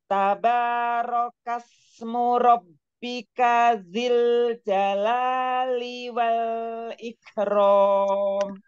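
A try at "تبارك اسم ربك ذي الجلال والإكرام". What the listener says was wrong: Coba dzilnya tahan. Dzil jalali wal tahan. Ketikan lam sukun. Lam sukun.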